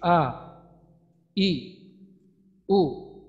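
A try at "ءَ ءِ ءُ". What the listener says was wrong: আরেকটু শক্ত করার চেষ্টা করেন তো, কারণ আমরা একটা বিষয় আগেই আমাদের এই বিষয়টা সম্পর্কে হয়েছে যে আমরা এখন যেহেতু আমরা শিক্ষার্থী, শেখার পর্যায়ে আছি, তো এখানে আমরা সর্বদা চেষ্টা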